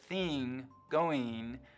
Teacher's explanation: the kit vowel is being split in two for NG it's likely to sound like e